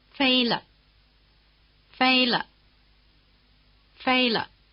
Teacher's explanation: after the high tone the pitch of the neutral tone is almost at the bottom